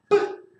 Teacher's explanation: Diferente no tengo aquí el sonido P, pero el sonido P, no sé por qué no está aquí, pero el sonido P es un sonido donde explota, ¿no? Está contenido el aire dentro y de repente explota.